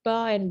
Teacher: a bilabial consonant, the lower and the upper lips touches each other